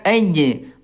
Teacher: Suaranya tertahan. Kalau sukun enggak bisa lanjut ya. J enggak bisa lanjut. Karena enggak bisa lanjut, Ayah Bunda, dia masuk ke sifat yang lain namanya qalqalah. Mantul ya aj mantulkan.